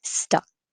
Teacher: This is the as in up. Stuck, just single syllable, and I wouldn't release the K. Stuck. Stuck with you.